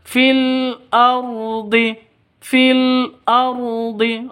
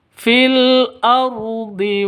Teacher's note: ini Alif lamnya ini alif lam qari qamariah karena tandanya sukun Ardi rnya ro tafhim atau ro tebal